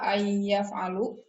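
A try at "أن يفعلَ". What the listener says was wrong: Kalau ada alif nun an, jadi bacanya fathah ayyaf'ala.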